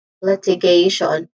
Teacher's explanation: where the stress syllable is on the third syllable